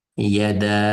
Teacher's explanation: Buni maddi vojib. Shunga 4-5 harf miqdorida yada deb o'qiymiz.